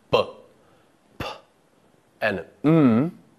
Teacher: Sounds which utilize both the top and bottom lips are called bilabial sounds.